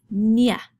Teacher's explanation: we're used to in english the first one is nye now when you make the sound of the enye it's kind of like putting an n and a y together